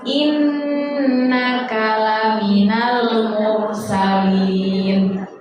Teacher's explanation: Nah, kalau gunnah itu kita nggak boleh langsung inna kalaminal, tidak. Tapi inna ditahan dulu karena itu gunnah.